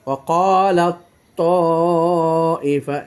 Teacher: যে দেখেন, তা এবং ত, তা এবং ত পাশাপাশি এসেছে, সাইলেন্ট হয়ে গেছে তা, উচ্চারণ হয়ে গেছে ত। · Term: ইদগামে মুতাজানিসাইন